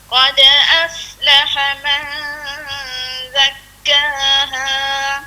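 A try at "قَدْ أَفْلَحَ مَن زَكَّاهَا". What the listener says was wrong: Huruf za ni dikeras sikit bunyi. Za dia bunyi.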